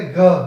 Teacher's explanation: क भी अघोष, वाइब्रेशन नहीं होगा गले में आपके, ख वाइब्रेशन नहीं होगा गले में आपके, लेकिन आप जब बोलेंगे घ और घ बोलने में आपके गले में वाइब्रेशन होगा। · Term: सघोष